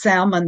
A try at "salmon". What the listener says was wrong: Now, you say salmon. You actually pronounce the L.